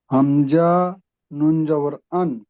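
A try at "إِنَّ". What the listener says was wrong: হামজা নুন জের আছে। জি।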